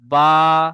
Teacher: দুই ঠোঁটের ভিজে অংশ মিলিত হয়